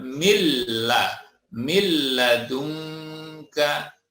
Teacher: Di sini nun bertemu dengan lam, dibaca masuk atau idgham tapi tanpa dengung, bila gunnah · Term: idgham bila gunnah